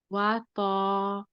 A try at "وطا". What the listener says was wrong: That's a little bit better. It can still be polished a little bit more though.